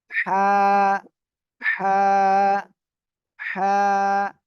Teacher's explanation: হলকের মধ্যখান অর্থাৎ এই যে গলা, গলার এখানে হালকা চেপে আপনি অক্ষরটা উচ্চারণ করবেন। · আমরা হলক মানে গলা, গলার মধ্যখানে একটু চেপে ধরবো, ঠিক আছে? হলকের মধ্যখান হইতে হা অক্ষরটি উচ্চারণ হয়